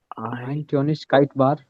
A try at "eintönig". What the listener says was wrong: Eintönig. Remove the kite.